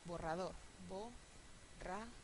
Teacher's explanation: la segunda termina en vocal no lleva tilde borrador Bo raad esta palabra es aguda Sí porque el estrés está en la última sílaba